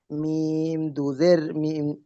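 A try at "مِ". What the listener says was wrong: দেখেন এখানে দেখেন মিম জের বলতে হবে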